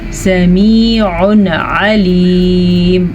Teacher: یہاں پہ اظہار کا قاعدہ ہو رہا ہے، تنوین کے بعد حروف ہلکی میں سے عین آیا ہوا ہے تو ہم تنوین کو ظاہر کر کے بغیر غنے کے پڑھیں گے اور وقف کی وجہ سے میم ساکن ہو جائے گی۔